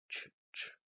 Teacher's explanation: La lengua se desliza del sonido t al sonido sh y el resultado es este sonido ch, ch, ch. Este sonido es sordo, no hay vibración de las cuerdas vocales, es oral porque el aire sale por la boca · Esto es lo que en inglés se llama glide, es decir, un deslizamiento. La lengua se desliza del sonido t al sonido sh y el resultado es este sonido